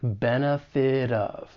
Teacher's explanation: When the T comes between two vowel sounds, often I am going to say it as a flap T, it's going to sound more like a soft D. And then I can link that flap T with the beginning vowel sound in of.